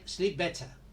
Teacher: we don't pronounce the P